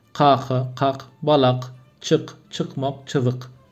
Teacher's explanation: Kelime içinde ve sonunda da K sesi Türkmence'de K yazılıyor ama Q gibi duyuluyor.